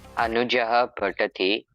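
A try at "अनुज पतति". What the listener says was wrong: Not Anujaha. There is no Jaha there. Anuja. Anuja. It is elongation.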